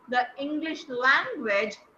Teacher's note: So in the first thought group, the English language, you will stress on language because we'll always stress on the last content word.